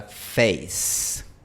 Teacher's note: Como te decía, esta vocal no es exactamente igual a la e española porque es un diptongo, tiene un pequeño glide al final. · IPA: /'feɪs/